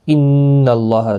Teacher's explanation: ان اللہ، نون مشدد پر غنہ ہوگا، اللہ کا لام زبر کی وجہ سے پر پڑا جائے گا